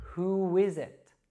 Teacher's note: what happens when we have a u sound followed by another vowel is it becomes a w sound